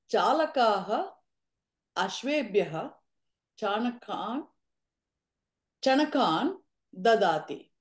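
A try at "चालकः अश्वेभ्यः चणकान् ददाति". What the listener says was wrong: అశ్వేభ్య అనకండి, అశ్వేభ్య అని ఒత్తుగా అనండి.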